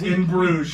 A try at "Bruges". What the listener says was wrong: You're saying the S. It's Bruges. That's the S. Bruges.